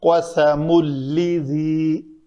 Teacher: قاف کے بعد سین پتلا ہے، قوس ہے، سین کے لیے چھونٹ ہمارے پیچھے ایسے جائیں گے، قسم لذی، تو سین کو قسم صاد ہو جائے گا، اس کو پر نہیں ہونے دینا۔